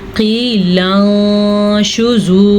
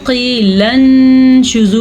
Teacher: ادا کرنے کے لیے نون کی آواز کو کسی حد تک چھپاتے ہیں، کیونکہ اخفاء کا مطلب ہے چھپانا، اور غننے کی کیفیت بھی پیدا ہوتی ہے، سن لیں، قیل انشزوا، یعنی کہ غنہ ہم نے اس کو تھوڑا طویل کر کے پڑھا ہے، اور چھوڑا ہم نے چھپایا.